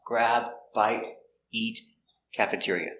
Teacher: we stress important words want grab bite eat cafeteria are stressed